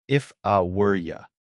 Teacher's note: When we say, if I were you, we don't say it word for word. We use that relaxed vowel, the schwa. It sounds like, if I were ya. · But for the TikTok version, it's fast, it's connected, and that were almost disappears. We are reducing the function words to prioritize the content words.